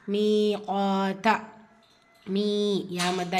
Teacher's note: இருக்கு இரண்டு ஹரக்கத் அளவு நீட்டம் கொடுத்து ஓதணும் மீத்தா மீ யா மத்தா இரண்டு ஹரக்கத் அளவு நீட்டம் கொடுக்கணும்